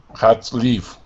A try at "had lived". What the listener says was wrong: Close. And we need to get that D sound. So, lived.